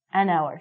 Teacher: say the H word it sounds like we're saying our so because this word our sounds like a vowel because the H is silent